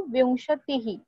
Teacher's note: टी के बाद विसर्ग है, so it will be ही